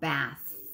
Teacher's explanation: our vocal folds aren't vibrating for the th like in the word uh bath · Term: unvoiced